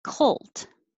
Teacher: i can make my k at the same time i'm making my l